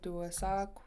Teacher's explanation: it ends in a rounded K which means a KW